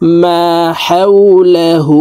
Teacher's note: হার উপরে উল্টা পেশ আছে তাই ঠোঁট গোল করে এক আলিফ টেনে পড়বো